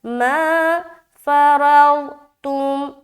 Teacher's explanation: فنصف فو ما فرضتم، ما الف مدہ، فرضتم، را ضاد زبر رو اور تامیم پیش تم، ما فرضتم، را کو موٹا، ضاد کو بھی موٹا